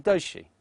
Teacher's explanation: We replace the z sound with the j sound, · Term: Contextual assimilation